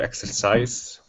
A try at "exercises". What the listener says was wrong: Don't forget the S. Exercises.